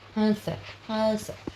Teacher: वायु मुख और नाक दोनों में बाहर निकलती है। हंस हंस मतलब मुंह से भी निकलेगा और नाक से भी निकलेगा। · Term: अनुनासिक